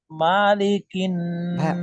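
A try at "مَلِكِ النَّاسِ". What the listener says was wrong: মা নাই এখানে মা এখানে কোন টান নাই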